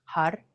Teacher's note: the tongue flicks the roof of the mouth right behind the front teeth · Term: rolling my RS